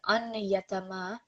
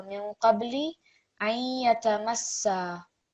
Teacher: So here we're not going to read it as an yatama, but it's going to be ayya. So you're going to have a nasal sound, okay? And so you're not going to hear the noon very clearly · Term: partial assimilation